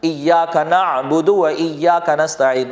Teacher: عام انداز میں پڑھیں گے تو یہ عین حمزہ بن جائے گا اور ہا بن جائے گا